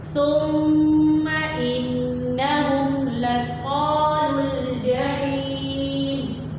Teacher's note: یہاں پر میم اور نون دونوں مشدد ہیں تو دونوں کو ہم قنہ کی آواز کے ساتھ پڑھیں گے